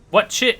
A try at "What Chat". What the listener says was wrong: Not chit, what chat? What chat?